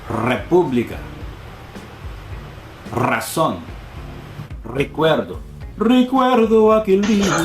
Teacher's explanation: if the R is at the beginning of the word, or if it's a double R, then you really have to roll your R's.